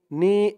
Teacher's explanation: নি এক আলিফ টান, জেরের পরে ইয়া সাকিন।